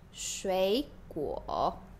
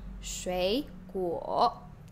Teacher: when you are speaking in the third tone, you have to go like the lowest range of your voice